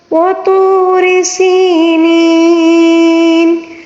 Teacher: را کے نیچے جو زیر ہے اس کو باریک پڑھیں گے، ٹھیک ہے۔ اگر اس کے اوپر زبر یا پیش ہوتا تو را کو ہم پھر پر پڑھیں گے، ٹھیک ہے۔